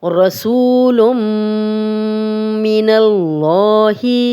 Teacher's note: رسول من اللہ، اب تنوین ہے، تنوین کے بعد میم ہے تو تنوین اور میم آپس میں مل رہے ہیں، رسول لم، اب لام اور میم کی آواز آ رہی ہے، یہ ادغام ہو رہا ہے یہاں پہ اور ادغام کے ساتھ ہم غنہ بھی کر رہے ہیں۔ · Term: ادغام بالغنہ